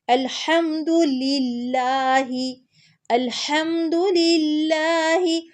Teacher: آل بھی نہیں کہنا اور آل بھی نہیں کہنا، ال فوراً سے پڑھنا ہے. حمد، ہا کو حلق کے درمیان سے نکالیں گے اور دال پہ پیش ہے، اس کو بالکل لمبا نہیں کرنا.